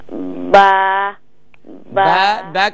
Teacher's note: دونوں ہونٹوں کے گیلے حصے کو ملا کر سختی سے ادا کریں گی، اور با کو اوپر کی طرف منہ نہ کھولیں، سائڈ پہ کھولیں گی۔